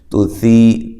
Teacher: تا کو باریک پڑھنا ہے، سی یا مدہ ہے